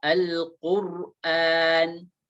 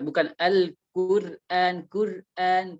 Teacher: sebelumnya ada huruf qaf yang berbaris dhammah, maka ra-nya harus dibaca tebal